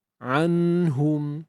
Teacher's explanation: Bacanya adalah secara izhar iaitu menjelaskan tanpa dengung yang panjang Jelaskan tanpa dengung yang panjang dengung tetap ada Tuan Puan dengung